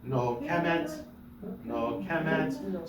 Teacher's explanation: The accent is on ke, not on met.